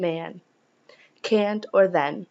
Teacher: in English, vowels preceding nasal consonants are nasalized, such as in man, can't, or then.